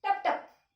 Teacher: अगदी पटकन आपल्याला बोलायचा आहे कसा बोलायचा आहे पटकन टप टप ट वर जास्त जोर द्यायचंय प जरा छोटाच उच्चार करायचा आहे